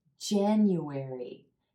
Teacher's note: The emphasis is on the first syllable and the ah as in black sound. That means that this sound is going to be pronounced a little longer and with a little more energy.